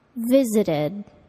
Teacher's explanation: The ed verb ending sounds like id, visited.